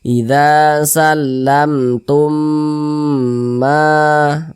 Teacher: Tumnya itu kita tahan, kita panjangkan sejenak, kita dengungkan. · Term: idgham mimi